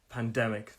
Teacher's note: three syllable words stress is on that second syllable